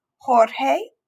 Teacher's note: the letter j is going to be pronounced like the letter h in the english word hat but it's even going to be more strongly and in the back of the throat